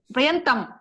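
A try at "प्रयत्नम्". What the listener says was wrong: Prayatnam. Na is the last consonant.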